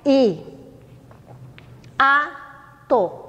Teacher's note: Nesse caso, a pronúncia é hiato. Eu pronuncio tanto o I como o A. E quando eu separo a sílaba, ó, elas ficam em sílabas diferentes. Eu faço I, A, to.